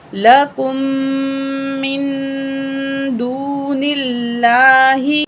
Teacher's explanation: नून साकिन है, अगला अल्फाज दाल है, हरूफ इख्फा में से है, नून की आवाज़ को नाक में छुपा के पढ़ेंगे।